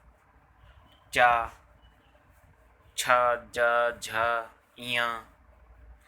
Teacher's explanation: तालव्य व्यंजन जो तालु और जीभ के स्पर्श से बोले जाते हैं · तालव्य व्यंजन तालु और जीभ के स्पर्श से बोले जाने वाले वर्ण वाले व्यंजन। जीभ के मोटे वाले भाग और तालु के स्पर्श से बोले जाने वाले वर्ण तालव्य व्यंजन कहलाते हैं।